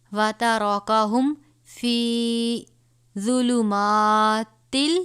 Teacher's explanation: یہ را کو پر پڑھیں گے، اس کے اوپر زبر ہے